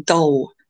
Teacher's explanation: the tongue is just a little too far back on the alveolar Ridge and it starts to hit more of the hard palate · it just sounds a little swallowed it's a little too far back and that sounds quite dense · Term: darker